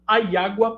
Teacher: No português europeu do norte, eles fazem um ditongo. Então, a água para eliminar o hiato.